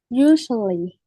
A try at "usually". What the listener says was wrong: Usually. Yeah, it's kind of along with many syllables. Usually. Yeah, but we say it a little bit fast so it doesn't sound like four.